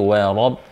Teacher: Wa tipis, wa bukan wa, wa rabb, wa rabb tapi wa rabb. Ra-nya tebal sebab ra harakat fathah. Ba-nya tasdid.